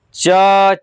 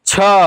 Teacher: जब आप च बोलेंगे ना, तो इसमें वायु का मात्रा कम लगेगा। च, छ, इसमें अधिक लगा।